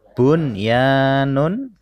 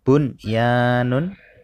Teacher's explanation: ada nun sukun bertemu dengan huruf ya maka dibaca jelas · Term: idhar wajib